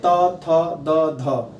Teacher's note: त, थ, द, ध, ये 4 ऐसे वर्ण हैं जिनका उच्चारण आप करेंगे तो इनका उच्चारण स्थान आपके मुंह के किस भाग का हो रहा है, जिसे आप क्या कहते हैं, दंत कहते हैं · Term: दंत्य